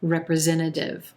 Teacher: you'll also a lot of times hear this final t in this word sound like a flap t so it'll sound like representative representative like a quick d either